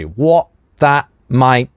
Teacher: каждое из этих трех слов кончается на /t/, а дальше идет согласный, поэтому они замещаются на гортанные смычки